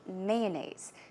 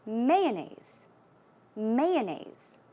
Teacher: I say mayonnaise. So, I put stress on the first syllable.